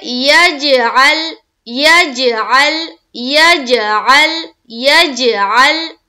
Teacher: ہم قلقلہ کریں گے تو ہماری آواز ٹکرائے گی، اور عین کو لام سے ملائیں گے تو لام کی مخرج کے اوپر ہماری آواز رک جائے گی